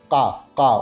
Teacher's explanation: uma plosiva na úvula